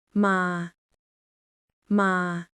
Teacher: Your voice stays flat and steady like a robot. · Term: mid-tone